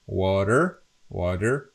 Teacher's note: this is pronounced in American English as water, water, kind of D sound here